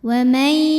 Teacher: Di sini ada hukum idgham bi gunnah karena ada nun sukun yang menghadapi huruf ya. Maka bunyi nun sukunnya dimasukkan ke ya, dileburkan. Wa may disertai bunyi dengung.